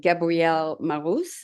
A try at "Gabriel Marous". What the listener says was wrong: Yeah, I like to say Gabriel Marous. Gabrielle tends to be for a female here in America, at least. so just Gabriel Marous.